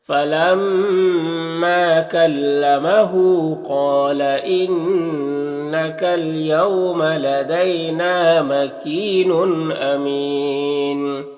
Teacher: امین میں وقف کی صورت میں مد عارض وقفی ہوگا